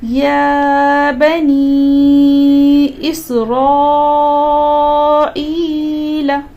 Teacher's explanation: تو چونکہ ہم مد متصل کو مد منفصل سے بڑی مد مانتے ہیں تو آپ یہاں پر 4 سیکنڈ مد منفصل میں پڑھ سکتے ہیں اور یہاں پر 5 سیکنڈ، یعنی یا بنی میں آپ کھینچ سکتے ہیں 4 سیکنڈ تک، لیکن یہاں پر اسرائیل میں آپ 5 سیکنڈ تک کھینچ کر کے پڑھ سکتے ہو کیونکہ مد متصل مد منفصل سے بڑی مانی جاتی ہے.